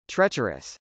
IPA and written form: trˈɛtʃɚəs (treacherous)